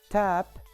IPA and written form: tæp (tap)